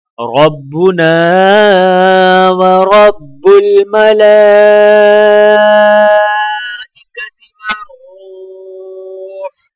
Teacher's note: را کو واو ساکنہ کے ساتھ ملاتے ہوئے ایک الف کے برابر کھینچ کر پڑھا جائے گا · لام کے اوپر مد اور کھڑی زبر ہے تو لہٰذا 4 سے 5 سیکنڈ کھینچ کر پڑھا جائے گا